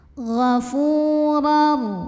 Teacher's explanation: Huruf ra dibunyikan secara tafkhim karena ra-nya berbaris di atas barisnya tanwin fathah. Maka cara bacanya ditebalkan, pangkal lidah dinaikkan.